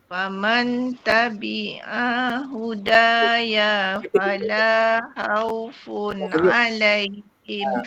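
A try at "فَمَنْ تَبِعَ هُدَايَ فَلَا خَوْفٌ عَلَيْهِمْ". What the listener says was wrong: Tu pendek. Faman tabi'a huda. Terus sambung.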